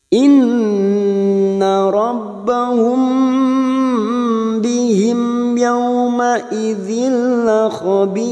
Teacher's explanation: R mati karena wakaf yang didahului kasrah maka kita baca atau tipis